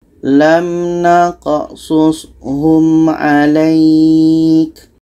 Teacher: Ya mati sebelumnya baris di atas ketika berhenti itu panjang. Ya mati sebelumnya baris di atas, setelahnya ada huruf yang dimatikan dan letaknya pada akhir, ini dipanjangkan lainnya. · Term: mat lain